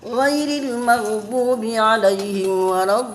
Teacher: Mad lazim musaqqal kalimi itu panjangnya 6 harkat. Ya, 6 harkat dan harus benar-benar lengket. Ya, dari dod kepada lam, dari lam kepada dod.